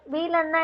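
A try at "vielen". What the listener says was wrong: வி கிடையாது, ஃபீலன்.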